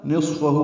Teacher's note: نصفہ میں صاد پر ہے اور اس پہ ہمس ہے ، فا کو جلدی ادا کرنا ہے، ہو پہ مد منفصل